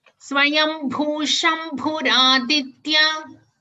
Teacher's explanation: After the Visarga, you have a Sha, so you will stress on the Sha.